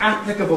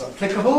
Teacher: Stress moving from the first syllable to the second syllable. So that applicable becomes applicable, that's the top line.